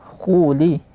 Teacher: Isti'la tebal. Tekanan suara ke langit mulut.